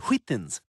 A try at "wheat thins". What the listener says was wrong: Wheat thins. Wheat thins. Why are you putting so much emphasis on the H? Say wheat. Now say wheat thins.